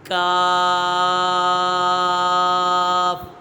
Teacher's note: کاف یہ حرف لہویہ ہے، اس کا مخرج ہے زبان کی جڑ اور تالو کے سخت حصے سے ادا ہوتا ہے۔